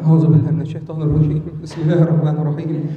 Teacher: ما معنى ترعيد الصوت؟ ترعيد الصوت أي كأنه يقرأ وعنده برد، حمى، عنده حمى